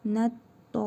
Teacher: Burada həm hərfi məd var, həm də şəddə var. Bir əlif miqdarı uzadaraq şəddəli tələffüz edirik.